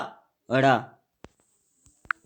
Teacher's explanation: उत्क्षिप्त अर्थात जिन वर्णों के उच्चारण में जिह्वा मूर्धा को स्पर्श कर तुरंत नीचे गिरती है, उन्हें उत्क्षिप्त व्यंजन कहते हैं